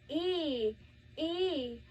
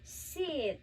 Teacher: So first we had long high front vowel. We had a long e.